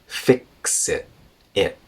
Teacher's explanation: glottal stop at the end of it